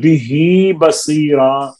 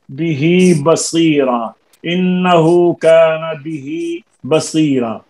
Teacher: یہ بہی بصیرا میں ہم جو آواز دیں گے بہی بصیرا میں وہ کھڑی زیر یعنی یائے مدہ کی آواز ہے